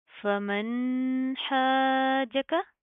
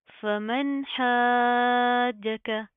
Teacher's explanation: فمن حاجك، اب یہاں پر دیکھیں کہ نون ساکن کے بعد حروف ہلکی میں سے ہا آ رہا ہے، ٹھیک ہے؟ تو یہاں پر سمپل اظہار ہوگا، ہم نون کی آواز کو ظاہر کریں گے۔